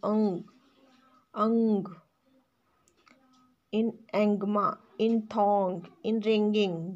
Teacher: Another velar consonants in ang, in angma, in thong, in ringing. There is no g sound at the end of these words.